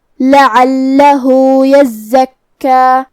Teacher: یہاں مد صلہ صغرا ہے تو ہم اپنی آواز 2 مد کے برابر لمبی کریں گے